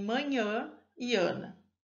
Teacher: O modo de articulação nasal, é aquele em que os articuladores estão fechados e o ar não consegue passar. Isso ocorre porque o véu palatino está abaixado e o ar escapa, portanto, pela cavidade nasal, como em manhã e ana.